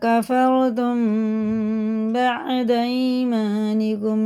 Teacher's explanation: میم ساکن کے بعد با آ رہا ہے تو یہ کیا ہے، اخفا شفی، اخفا شفی ہوا نا، غنہ اور اخفا دونوں کر کے پڑھنا ہے میم کو